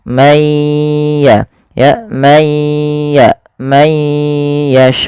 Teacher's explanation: nun mati bertemu ya. Ini ada bacaan idgham bighunah. Cara membacanya masukkan suara nunnya kepada ya teman-teman. Masukkan kemudian ditahan suara ya-nya. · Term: idgham bi gunnah